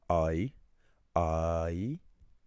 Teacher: Two together like I I that's two vowel sounds. You're combining a and e.